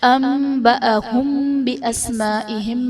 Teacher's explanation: انبأهم میں نون ساکن کے بعد حرف با ہے تو یہاں پر نون ساکن کو میم سے بدل کر اخفا کریں گے، یعنی غنہ کر کے پڑھیں گے تو یہاں پر اقلاب کا قاعدہ ہوگا۔ انبأهم بأسمائهم میں میم ساکن کے بعد حرف با ہے تو یہاں پر اخفاء شفوی کا قاعدہ ہوگا، یعنی میم ساکن میں ہم غنہ کر کے پڑھیں گے۔ بِأَسْمَائِهِمْ میں الف سے پہلے زبر ہے، الف مدہ کا قاعدہ، اور حرف مدہ کے بعد حمزہ اسی کلمے میں ہے تو یہاں پر مد متصل کا قاعدہ ہوگا۔